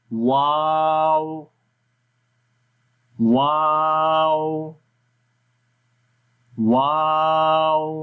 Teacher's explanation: ہونٹ تو گول ہو جاتے ہیں لیکن ملتے نہیں ہیں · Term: واو غیر مدہ